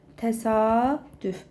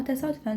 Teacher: Təsadüf sözündə uzanma var. A uzanacaq amma təsadüfən sözündə uzanma yoxdur.